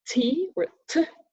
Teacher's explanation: that's an alveolar sound so the tongue goes up to the part behind the teeth